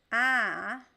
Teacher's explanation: If you say ah, you will not feel any vibration on your nose, because the ah sound is an oral sound. It goes directly through your mouth.